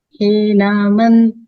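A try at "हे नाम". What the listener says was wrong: He nama. Nama, not nam. Nama.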